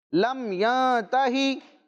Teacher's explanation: نون ساکن کے بعد حروف اخفا میں سے حرف آ رہا ہے تا، تو کیا ہوگا؟ غنہ ہوگا۔